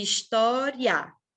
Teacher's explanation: eu não tenho duas vogais eu tenho uma semivogal e uma vogal até porque duas vogais não podem estar na mesma sílaba né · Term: ditongo